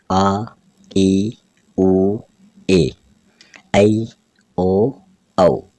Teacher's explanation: ह्रस्व स्वर से दुगुना समय इसमें लगता है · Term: दीर्घ स्वर